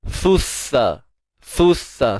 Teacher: Satu huruf sa keluar hujung lidah, kemudian huruf sin tak perlu keluar hujung lidah. Huruf sin ni hujung lidah di belakang gigi sebelah bawah.